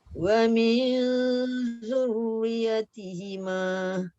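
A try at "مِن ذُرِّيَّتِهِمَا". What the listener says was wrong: Zurriyah. Zal tu dah betul dah. Betulkan ra tu nipis.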